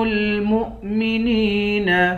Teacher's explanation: میم کو حمزے کے ساتھ ملائیں گے، میم کو واو سے نہیں ملائیں گے۔ مؤمنین، نون کو یا کے ساتھ ملا کر، یا کو ایک الف کے مقدار کھینچ کر پڑھیں گے۔